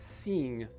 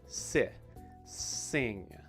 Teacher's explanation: this word has one of those short i sounds so not e not seeing but si sing